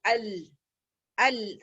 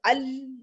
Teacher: مخرج بھی بند ہوا اور آواز بھی ٹریول کر رہی ہے, اور اس وجہ سے تھوڑا ٹائم دیں گے ال, ال ہلکا سا تھوڑا لمبا کھینچیں گے ال.